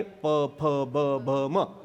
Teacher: आपल्याच ओठाला आपलाच ओठ लागला की अक्षर तयार होतं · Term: ओष्ठ्य